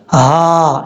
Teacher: یہ ہا بھاری ساؤنڈ کے ساتھ پڑھا جائے گا. اس ہا کو پڑھتے ہوئے سینے سے آواز آنا لازمی ہے